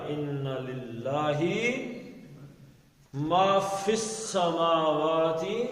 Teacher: الا ان للہ، اب لام کے نیچے زیر ہے، اللہ کے پیچھے زیر آ گئی تو اللہ کا لام باریک پڑھا جائے گا